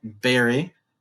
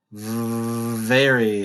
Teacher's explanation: where the lips are hitting each other, B, and popping like that, berry, versus very.